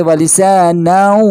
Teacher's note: یہاں پہ نون یعنی تنوین کے بعد واو ہے، تو یہاں پہ تنوین ادغام مع الغنہ کا یعنی قاعدہ جاری ہوگا